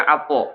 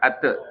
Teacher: Kalau ate itu pangkal lidahnya nggak naik ya, tapi kalau apo pangkal lidahnya naik ya. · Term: tafkhim